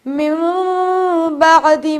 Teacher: اور نون کے ساؤنڈ نکالنے کے بجائے میم کا ساؤنڈ نکالتے ہیں. اسے کہتے ہیں اقلاب.